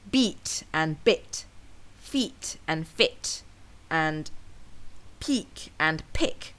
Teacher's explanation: pairs of words that sound similar but have contrasting vowel lengths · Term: vowel length contrast